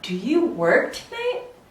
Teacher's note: Yes or no questions, we're gonna go up. So for example, do you work tonight? It goes up like an airplane